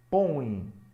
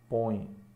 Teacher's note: Observe que essa letra E tem som de I. Põe, tem som de I.